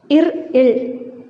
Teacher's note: மேல்வாயை நாக்கின் நுனி வருடுவதால் பிறக்கின்றன